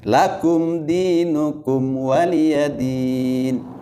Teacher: itu adalah izhar mim ya, itu jangan ditahan-tahan, biasa aja.